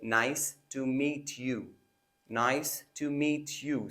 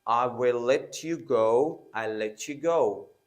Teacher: a word ends with T, and right the next word starts with Y, so there we put a ch sound